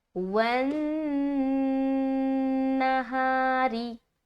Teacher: री को करते पढ़ते हुए रा बारीक मालूम होनी चाहिए क्योंकि इसके नीचे क्या है, ज़ेर है